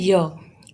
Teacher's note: palatal, tongue plus hard palate